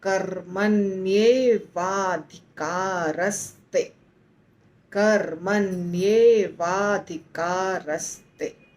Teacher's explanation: अधिकार का अ जुड़ गया व के साथ वा हो गया और धि धि का बच गया तो कर्मन वाद अधिकार और · का बच गया तो कर्मन वाद अधिकार और ते जुड़ा जब अधिकार के साथ जब ते जुड़ा तो स वहां पर आ गया आधा स